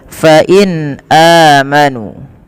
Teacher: pada lafal nun sukun bertemu dengan hamzah, ini suara nunnya dibaca dengan jelas karena ia ada bacaan yang kita namakan dengan izhar halqi.